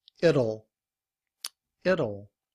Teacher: But when we reduce our speech, will, we don't pronounce the W, and we just use the schwa and the L to say O. It becomes id.